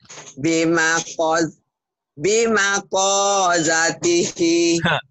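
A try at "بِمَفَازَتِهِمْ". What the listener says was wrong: Kok itu titiknya 2. Ini mah titiknya 1. Fa. Bima fa. Ya-nya pendek. Bima fa zatihi.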